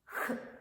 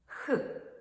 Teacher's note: повітря затримується глибоко в роті біля задньої частини язика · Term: звук х